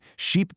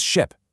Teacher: If you don't stretch your vowel properly, sheep becomes ship.